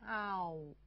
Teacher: 口型由半张转至圆收圆